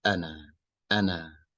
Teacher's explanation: make sure your A sound is not as open as you would say it in English.